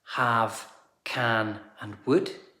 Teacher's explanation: auxiliary words have can and would all shrink down into the schwa. The schwa is a lazy sound like this. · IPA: /ə/